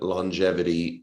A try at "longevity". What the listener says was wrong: No hard G, longevity.